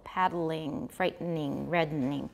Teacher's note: they can be said as three syllables with a syllabic nasal or lateral in the middle